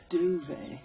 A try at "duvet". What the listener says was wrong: And I think the correct pronunciation you'll find is duvet. There's a T on the end.